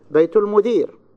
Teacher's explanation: So I have a high pitch on المدير. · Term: stress